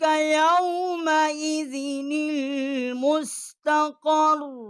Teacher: اس نون کو جو ہے المستقر کی لام جو ہے اس کے ساتھ ہم نے ملا کر اس کو پڑھا ہے